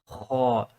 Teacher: this is like a scratching sound. You're scratching the back of your throat to say ha. There's a difference between a gargling sound.